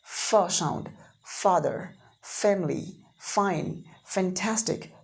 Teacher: पहले एक लिप और एक दांत, हमें एक लोअर लिप लग रही है, नीचे वाली लिप लग रही है, और ऊपर का दांत अपर टीथ लग रहा है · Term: लेबियो डेंटल